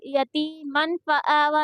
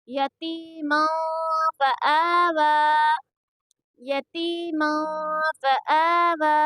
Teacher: यहाँ पर नून की आवाज़ को छुपा कर पढ़ेंगे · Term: इख्फा